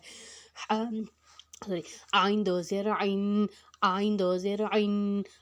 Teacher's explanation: عین جو ہے حروف حلقی ہے ہا کی طرح، اس کو ہم نے حروف حلق سے نکالنا ہے